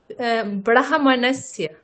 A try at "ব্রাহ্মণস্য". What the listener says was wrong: আচ্ছা, এটা ভুল উচ্চারণ, কেমন? আগে ব্রাহ্মণস্য স্পেলিং অনুযায়ী কিন্তু আগে হ আছে, অবশ্যই আছে, আপনি যেমনটা আগে হ আছে, তারপরে ম, মানে যুক্তাক্ষরটা আমরা বলি না যে ময় হ, হয়